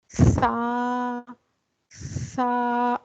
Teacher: सा को थोड़ी सी जबान बाहर निकाल के अदा करेंगे तो आपको अपने हाथ पर हवा महसूस सी होगी उस हवा को हमस कहा जाता है तो सा के अंदर · प्रोनाउंस द सा letter must bring your tongue outside against the upper and lower teeth